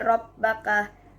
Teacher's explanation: huruf ba pertama dilebur ke huruf ba kedua menjadi Rabbaka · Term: idgham mutamatsilin